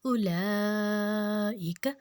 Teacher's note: اب دیکھیں یہاں پہ ہم نے واو لین ہے، اس کو ہم نے نہیں کھینچنا بالکل بھی نہیں. اولئک، لام کی حرکت کو ہم نے 4 حرکت کھینچنا ہے اور او کو ہم نے نہیں کھینچنا بالکل بھی. اس کو نرمی سے بغیر جھٹکا دیے ہوئے پڑھنا ہے، بغیر لمبا کیے ہوئے.